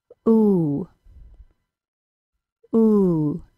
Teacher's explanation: tongue and the top of the mouth do not actually touch at the same time as the tongue is high the lips are made into a small tight Circle the sound is ooh ooh the long u is a two · the oo sound is created with the back of the tongue very High almost like a g sound but the back of the tongue and the top of the mouth do not actually touch